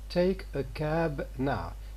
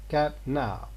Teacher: final stops are unexploded when the next word begins with a nasal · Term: nasal release